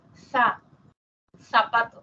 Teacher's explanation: que es el diente pero la lengua que toca los dientes interdentales que la lengua está entre los dientes